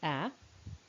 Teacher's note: short open front slightly spread lips